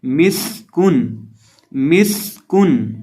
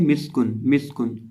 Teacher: तजवीद के मुताबिक जब हम सीन को पढ़ते हैं तो सीन में सिटी की आवाज़ पैदा करते हैं